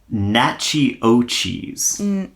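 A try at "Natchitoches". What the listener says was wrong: Okay, I don't know how to pronounce it, but that's not how you pronounce it. There's a T. You're missing the T. You're skipping the T completely. Nachitoches, probably.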